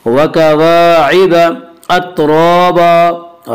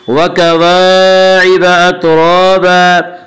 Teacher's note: रा के नीचे ज़ेर आए तो रा को बारीक पढ़ेंगे। या रा के ऊपर ज़बर है इसलिए रा को पुर पढ़ेंगे।